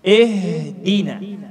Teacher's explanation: Sudah kita sepakat tadi, hamzah dibaca I, bukan hamzah dibaca E. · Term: harakat kasrah